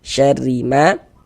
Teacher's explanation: Huruf ro memiliki harakat kasrah, tanda baca kasrah. Maka ini huruf ro kita baca tarkik, kita baca tipis. Syarrima ma dibaca panjang.